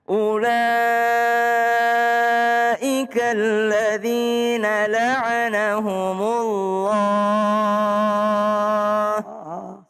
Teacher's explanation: Iya, boleh diperhatikan kalau ulaika ya setelah u itu ada waw itu tidak dihitung itu ya, jangan salah, tapi u-nya tidak panjang, la-nya panjang 4 sampai 5 harokat